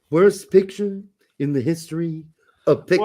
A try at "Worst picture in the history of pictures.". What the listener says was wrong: You broke a character there. You said history. He doesn't say history. It's huge. It's history, if anything. He doesn't pronounce his H's.